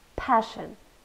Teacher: two syllables and we stressed the first one